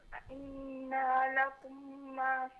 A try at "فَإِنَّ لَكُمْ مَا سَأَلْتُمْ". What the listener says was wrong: نہیں فإن یہ نون کو نہ کھینچیں، فإن لكم ما سألتم، اب اس کو ملا کر پڑھ لیجئے، فإن لكم ما سألتم،